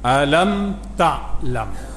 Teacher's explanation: mim mati bertemu selain pada ba dan mim, tutup mulut balik, dipanggil izhar syafawi. Alam ta'lam juga sama tu, jumpa hamzah tu.